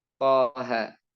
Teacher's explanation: Di sini to tidak bertemu sukun alifnya. Maka dia tidak dibaca panjang 6 harokat. Cukup dibaca 2 harokat. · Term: mat tabi'i harfi